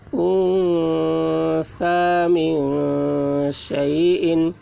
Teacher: نون ساکن کے بعد حروف اخفا میں سے سا آ رہا ہے، اس لیے نون کی آواز کو ناک میں چھپا کر پڑھیں گے، اس کو اخفا کہتے ہیں۔